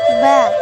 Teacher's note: Cara mengucapkannya dengan menyentuhkan bibir atas dan bawah. Sifat huruf: jahar, udara tertahan. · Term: dua bibir